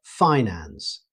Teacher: in American English, you'll most commonly hear finance with the stress on the first syllable